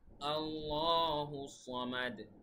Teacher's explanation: আল্লাহু এখানে এক আলিফ টান হবে, তারপরে সামাদ শেষে কলকলা হবে